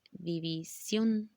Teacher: dando la intención de que la sílaba de mayor intensidad sea la última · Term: palabras agudas